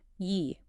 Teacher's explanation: Its base is a first tone, but it changes to a second tone, yi, before a fourth tone, and it changes to a fourth tone, yi, before a first, second, or third tone.